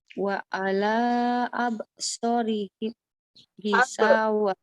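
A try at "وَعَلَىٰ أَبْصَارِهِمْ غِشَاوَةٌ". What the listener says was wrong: Abnya dikuatin. Wa ala absorihim gisyawah. Wa ala absorihim gisyawah. Wa ala absorihim. Gisyawah. Wa ala absorihim gisyawah. Soalnya kurang panjang. So, abso.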